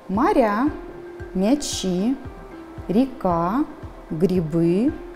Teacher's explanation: Первый слог мы произносим нечетко. Гласные звуки безударные.